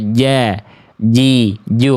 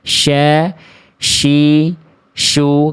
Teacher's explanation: Kalau huruf syin dia diangkat dan tidak menyentuh diangkat ke atas.